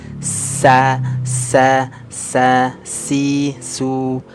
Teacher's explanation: lihat nih Ini berdesis sa sa sa si su es nah ini ada suara desisan ya Nah ini yang disebut dengan sifat asofir